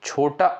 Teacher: जो छोटा अ होता है यह साथियों आपका मध्य स्वर के अंतर्गत आता है